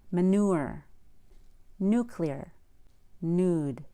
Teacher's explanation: there's no Y in the following words, which have the stressed vowel after the N